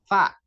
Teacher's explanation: Fa itu bibir yang bawah ini bertemu dengan gigi seri atas jadi nempel